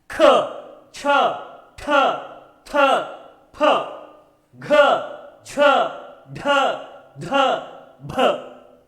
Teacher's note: हर एक वर्ण का उच्चारण करते समय हमें सांस लेनी पड़ी और फिर उसे छोड़ना पड़ा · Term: महाप्राण व्यंजन